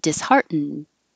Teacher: Heartened. But you won't hear the D if you're just saying the word disheartened. And you will hear the D if there's a vowel after it.